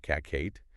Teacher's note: Some might release it with a little puff of air like cat. Others might hold it and not release it at all.